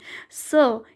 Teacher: स इसका होता है आपका दंत मूल से